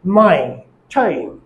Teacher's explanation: জিহ্বাটি লো front থেকে high ফ্রন্টে যাবে এবং ঠোঁটটি আনরাউন্ডেড হবে।